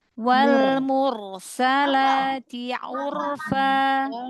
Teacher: roknya ditebalkan lagi, angkat pangkal lidah